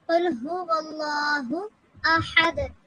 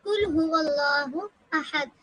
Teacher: لیکن اگر ہمیں مخرج کا علم نہیں ہے، ہمارا مخرج ٹھیک نہیں ہے، تو پھر ہم قل کے قاف کی جگہ پہ ہم باریک کاف ادا کر دیں گے، قل هو اللہ احد، جو کہ معاذ اللہ اس کا معنی غلط ہو جائے گا۔